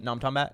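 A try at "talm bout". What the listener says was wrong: still say you pronouncing it too much. It's like, stretch out. No, I'm talking about. And then shorten bout.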